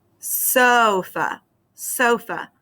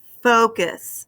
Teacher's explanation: I can feel my chin drop for that first syllable. That means it's the stronger syllable. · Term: accented